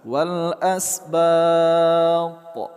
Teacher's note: Huruf tha di akhir kata, kita berhenti di sini. Nama hukum tajwidnya adalah qalqalah kubra.